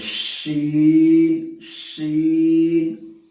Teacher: बड़ी वाली शीन जो है वो जबान के बीच और ऊपर के तालु से अदा होती है